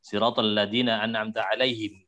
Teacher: Kemudian satu lagi tambahan untuk Imam Asim ya, pada lafadz mim jamak, ya di alaihim ya misalkan siratal ladzina an'amta alaihim itu him itu mimnya itu mim jamak itu dibaca dengan sukun walaupun dia dibaca dengan diwasol.